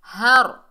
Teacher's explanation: اور را کو پر پڑھیں گے، را ساکن سے پہلے زبر ہے